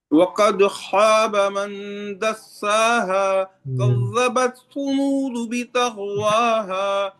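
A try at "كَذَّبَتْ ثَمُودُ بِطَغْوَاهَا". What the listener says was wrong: ٹھہریں، كذبت یہاں پر پیش سے آپ پڑھ رہے تھے شاید.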